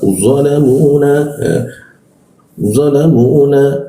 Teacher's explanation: Za, lidahnya diturunkan, dilengkungkan sehingga rongga udara terbuka.